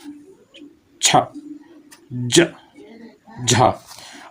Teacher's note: और उच्चारण के बाद मतलब जो उच्चारण जब करते हैं तब अधिक होता है और उच्चारण के बाद वाला जो भाग होता है वो संघर्षी होता है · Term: स्पर्श संघर्षी व्यंजन